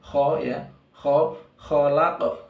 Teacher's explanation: Nah, ini baru qalqalah. Laqad, kemudian kho ya, dia lebih tebal daripada ha ya